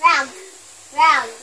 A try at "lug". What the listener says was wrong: No, it's not rug. It's lug.